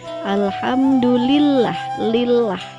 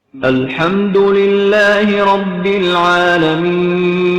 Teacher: harus membaca huruf lam pada lafaz Allah ini dengan tipis, yaitu dengan cara mengangkat lidah ke atas dengan suara rendah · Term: lam tarkik